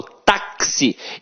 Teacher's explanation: o X aqui tem som de KS. Ou seja, uma letra tem 2 sons. Quando uma letra tem 2 sons, eu chamo de dífono.